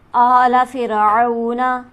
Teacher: आला के हमज़ा पर हमारे पास खड़ी हरकत मौजूद है, इसे हम खींचेंगे एक अलिफ के बराबर